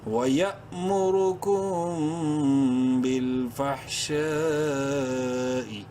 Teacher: فا حا زبر فح شین الف مد زبر شا، پانچ الف کے برابر لمبا کر سکتے ہیں ہم شین کو. حمزہ زیر ای.